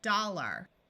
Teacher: our mouth gets a little lazy and instead of saying the r sound clearly it becomes muffled and sounds more like dollar this G is followed by an